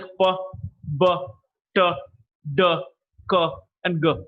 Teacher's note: initially, the air is built up inside the mouth. There's a total closure, and then there's a sudden release. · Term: plosives